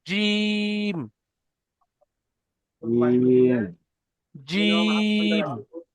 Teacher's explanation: জিমটা আরো চেপে বলেন, আর তিন আলিফ পরিমাণ টান দেন